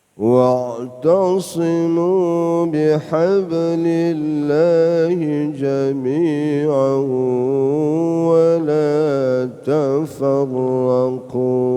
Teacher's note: jami'an tanwin berubah suaranya dari suara nun mati berubah menjadi wawu karena namanya idgham bi gunnah. Jami'an itu sudah alif, panjangnya satu alif berdengungnya ya. · Bihablillahnya enteng saja karena itu qalqalah sughra ya. Ba bihablillah jangan usah bihab itu kan keberatan.